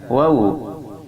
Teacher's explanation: Waw ini makharijul hurufnya berada pada dua bibir yang tidak disentuhkan.